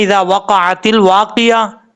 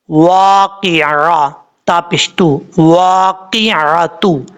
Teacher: قاف کے بعد عین کو چھوڑ رہے ہیں، واقعہ نہیں ہے لفظ۔